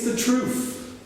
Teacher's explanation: It's the truth, with an F